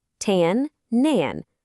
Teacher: The H just disappears, and you get nan.